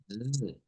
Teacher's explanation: En este caso, esta S que está aquí se hace con una S vibrante, que es como el sonido de la Z, Z. Entonces, se hace así.